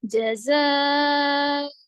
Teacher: آگے جیم پہ حرکت، زا حرف مدہ ہے، لیکن حرف مدہ کے بعد حمزہ اسی کلمے میں ہے تو مد متصل ہو رہا، تو یہاں پر 5 کاؤنٹس کریں گے، یعنی 5 حرکتوں کے برابر کھینچیں گے